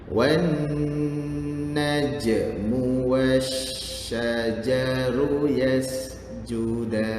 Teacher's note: Alif lam samsiah dengan berdengung. Sebab apa? Sebab ada nun sabdu.